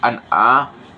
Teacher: Pada lafaz an'a terdapat izhar karena huruf nun sukun bertemu dengan ain. Dengan cara membacanya tidak dengung sama sekali